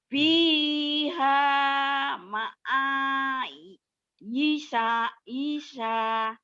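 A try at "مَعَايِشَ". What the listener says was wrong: Pendek. Fiha ma'ayisha. Ma'ayisha pendek.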